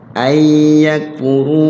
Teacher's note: lagi-lagi nun ketemu ya, idgham bi gun